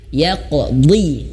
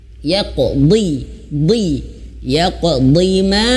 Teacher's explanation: ketika huruf dot itu meskipun kasrah dia tetap tebal.